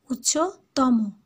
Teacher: ঠিক তেমনি কি উচ্চতম, ওকার এখানে শব্দ শেষের ওকারটা উচ্চারিত হবে।